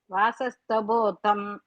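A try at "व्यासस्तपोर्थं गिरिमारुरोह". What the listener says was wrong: வியாசஸ் அங்க பிரிச்சுக்கோ, தப்போ தனியா.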